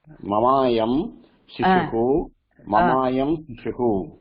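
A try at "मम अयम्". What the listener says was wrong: மமாயம் split பண்ணுங்க மமாயம் split பண்ணுங்க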